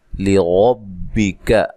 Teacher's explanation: لام کو باریک پڑھنا ہے، را کو خوب موٹا کرنا ہے، را کے اوپر زبر پیش ہو، را کو موٹا ادا کیا جاتا ہے۔